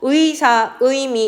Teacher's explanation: 첫 음절에 오는 의의 경우에는 무조건 이중 모음 의로만 발음을 한다. 그래서 의사, 의미 이런 것들은 모두 다 이중 모음으로 발음을 한다.